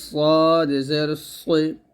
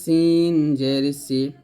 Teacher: সদ মোটা হবে সিন পাতলা হবে